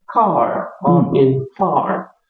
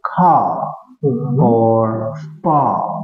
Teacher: in American English, the way they pronounce R at the end of the word is stronger. It's pronounced, such as in car or in far.